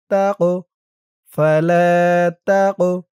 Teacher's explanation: কফটা কলকলার হরফ, ধাক্কা দিয়ে পড়তে হবে।